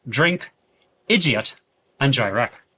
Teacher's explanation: this D sound almost comes across as a J. Words like drink and direct show this crisp D sound, but being pronounced in the Northern Irish accent, it would sound more like drink or direct, which give it that very crisp J sound.